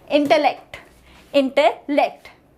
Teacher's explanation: The primary syllable of the word is IN. Yes, the initial part IN is the primary syllable here.